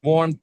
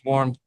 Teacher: the fire sank into my cold bones right it's not so it's not warm it's warmth it's unvoiced